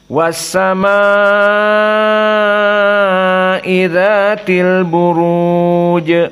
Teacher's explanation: qiraah Hamzah as-sama dalam keadaan mad wajib muttasil maka harus isba